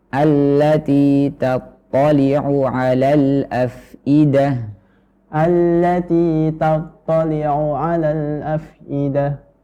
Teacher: Huruf ta sama to. Jadi perhatikan ketika ta tipis kemudian to tebal ya.